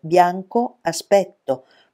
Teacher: Bianco a diventa una sillaba sola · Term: sinalefe